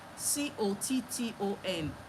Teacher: Now the second syllable is as if there is no vowel there, but there is supposed to be a vowel. So that N will now act like a vowel. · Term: syllabic consonant